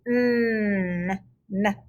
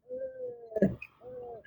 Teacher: M and N, those sounds come out of your nose. So if your nose is blocked, you can't hear those sounds. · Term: nasal sounds